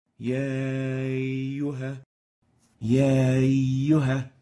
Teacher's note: You're almost not hearing the Hamza, as if the A vowel is extending to the Ya vowel.